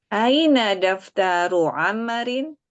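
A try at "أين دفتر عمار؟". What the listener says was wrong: amma-nya panjang. Aina daftaru Ammarin? Aina daftaru Ammarin?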